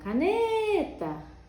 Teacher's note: a sílaba tônica ela fica mais comprida